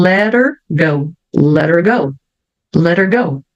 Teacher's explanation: Então tira o h o t vira um R